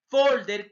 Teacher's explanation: la mayor fuerza de voz penúltima sílaba